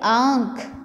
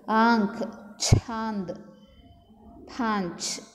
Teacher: ಬಾಯಿ ಮತ್ತು ಮೂಗಿನಿಂದ ಗಾಳಿ ಹೊರಬರುತ್ತಾ ಹೋಗುತ್ತೆ. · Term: ಅನುನಾಸಿಕ್